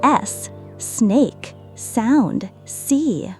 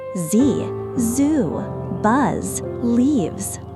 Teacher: Touch your throat and feel the difference. No vibration for S, but buzzing for Z.